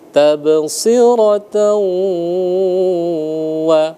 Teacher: Idgham masuk ya atau lebur ya. bi dengan ghunah dengung artinya dia didengungkan dibaca ghunah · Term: idgham bighunah, idgham bi gunnah